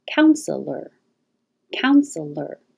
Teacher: say with two syllables counselor counselor or three syllables counselor counselor because this e is not stressed it's possible to just skip it